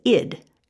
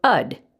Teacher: you may pronounce it id as if it's a short i or ud as if it's a short u or a schwa sound either way is appropriate it's a dialect issue the issue that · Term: dialect pronunciation